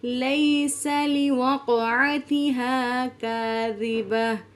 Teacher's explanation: لیسا یا ساکن، اس سے پہلے زبر ہے تو یہ یائی لین ہے، یائی لین کو انتہائی نرمی سے اور جلدی سے پڑھتے ہیں۔